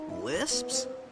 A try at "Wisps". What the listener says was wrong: No, Wisps, with a W.